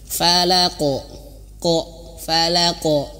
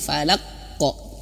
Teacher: pantulannya jangan ditahan harus langsung dipantul Falaq falqo nah gitu pantulannya harus di langsungkan saja jangan ditahan